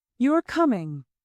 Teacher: Rising tone, this shows a question or surprise. Questions often rise.